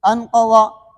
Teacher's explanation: انقوا نون ساکن کے بعد قاف ہے، اس میں اخفا ہوگا